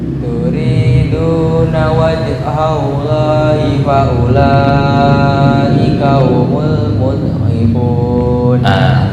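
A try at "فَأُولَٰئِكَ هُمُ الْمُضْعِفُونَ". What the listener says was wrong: Dot jangan memantul ya, bukan mud tapi mudhifun.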